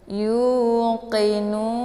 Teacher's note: Karena di akhir ayat atau di akhir kalimat, maka ini merupakan mad arid li sukun. Dibacanya boleh panjang 4 sampai 5 atau 6 harakah ya.